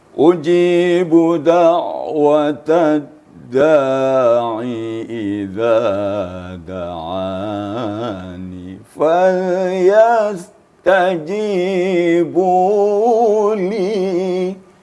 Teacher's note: Jadi di awal kita lembutkan suaranya, fal yastajibu itu perintah, maka dinaikkan suara kita. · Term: pengangkatan suara